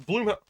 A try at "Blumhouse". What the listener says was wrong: I told you, it's spelled with a U, but it's pronounced Bloom. Well, yeah, it's spelled with a U, but it definitely is pronounced Blumhouse.